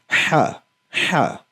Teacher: हा बेसिकली आपका जो हलक है उसके दरमियाने वाले हिस्से से अदा होता है। आप जो है हाथ रख के भी ये फील कर सकते हैं।